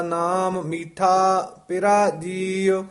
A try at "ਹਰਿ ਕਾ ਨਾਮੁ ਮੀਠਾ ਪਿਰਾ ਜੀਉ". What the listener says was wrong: ਮੀਠਾ ਪਿਰਾ ਜੀਉ ਨਹੀਂ ਕਹਿਣਾ, ਹਰ ਕਾ ਨਾਮ ਮੀਠਾ, ਇੱਥੇ ਠਮਕ ਲਾ ਦੇਣੀ ਹੈ, ਪਿਰਾ ਜੀਉ।